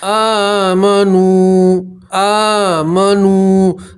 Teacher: آمنو، آمنو، دیکھیے کھڑا زبر میں بھی ایک الف کے برابر کھینچنا ہوتا ہے اور واو مدہ میں بھی ایک الف کے برابر کھینچنا ہوتا ہے